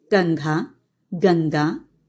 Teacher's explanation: अनुस्वार का उच्चारण स्वर रहित म तथा स्वर रहित न के समान होता है और नाक से होता है